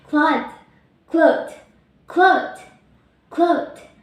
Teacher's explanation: K, voiceless, velar, and plosive. L, voice, alveolar, lateral approximant.